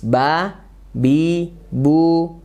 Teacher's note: maka sifatnya tipis dan ada Qalqalah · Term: huruf ba